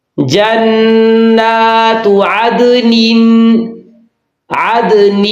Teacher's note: نون کی زیر کی آواز ناک میں نہیں جانی چاہیے